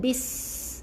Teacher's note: Huruf sin ni tak ada angin, dia ada berdesir sikit.